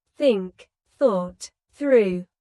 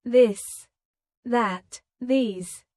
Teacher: Put your tongue between your teeth and push air out for think. For this, your tongue touches the same position but with your voice turned on.